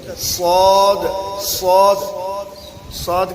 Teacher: صاد صاد صاد کے اندر صفت مستعلیہ ہو گئی بلندی